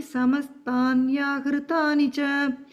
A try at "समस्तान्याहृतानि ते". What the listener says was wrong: the first line end Yahritani te. You said che.